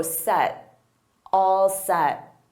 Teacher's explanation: I don't push out that T, so set, all set.